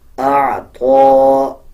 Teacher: طا کے اوپر کھڑا زبر ہے, 1 سیکنڈ لمبا کر کے پڑھا جائے گا